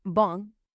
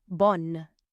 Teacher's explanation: The difference in pronunciation is that the masculine word ends in a nasal sound, bon, whereas the feminine word you can clearly hear the letter N, bonne.